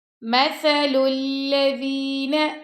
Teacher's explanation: سا کو آپ نے نرمی سے پڑھنا ہے، لام کو لام سے ملا دیں گے اور دال کو بھی نرمی سے پڑھیں گے، اور نون کو آپ نے لمبا نہیں کرنا۔